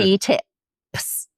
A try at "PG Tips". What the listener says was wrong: See, she doesn't pronounce the P, so it sounds like PG